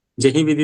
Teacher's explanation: अब इसमें देखा जाए तो दीर्घ कौन सा है? जे है। जे। बाकी सारे ह्रस्व है। ह्रस्व हैं।